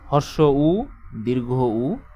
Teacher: জিহ্বা মুখের সামনে থাকে না, জিহ্বা থাকে মুখের পেছন দিকে। এই জন্য এটাকে পশ্চাৎ বলা হবে। · জিহ্বাটা পিছন দিকে সরে গিয়ে উপরে উঠবে। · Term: উচ্চ পশ্চাৎ স্বরধ্বনি